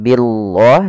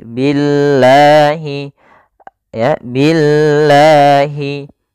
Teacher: Di sini ada lafal Allah, lafzul jalalah, yang dimana sebelumnya didahului dengan harakat kasrah, maka di sini lamnya menjadi lam yang tipis. Lam tipis, bukan lam tebal, atau kita namakan lam tarqiq.